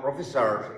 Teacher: the middle syllable receives the stress and the initial and final syllable are unstressed.